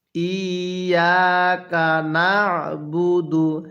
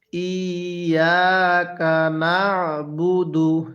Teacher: আইনটা উচ্চারণের সময় আপনি গলার মধ্যে চাপ দিয়ে পড়বেন তাহলে আইনটা সহি শুদ্ধ উচ্চারণ হবে তাহলে কিভাবে পড়তে হবে ইয়াকা